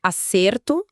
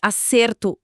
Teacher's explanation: acerto, substantivo, com E fechado, de acerto, verbo, com E aberto